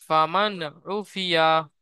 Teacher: তাই নুন সাইকিনের আওয়াজকে বিনা গুন্নায় জাহির করে তাড়াতাড়ি পড়তে হবে আইনের উপর পেশ এসেছে পেশটি হল হারাকাত হারাকাতকে তাড়াতাড়ি পড়তে হয়